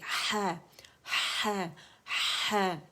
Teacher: Friction کے ساتھ آواز وسط الحلق سے نکلے گی اور اس کی ادائیگی ہوگی، لیکن آپ کو وائبریشنز وسط الحلق پہ فیل ہونی چاہیے.